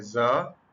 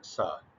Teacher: observation क्या है, अगर तो ज साउंड जो है वो वॉइस निकली है और सा साउंड जो है वो वॉइसलेस निकली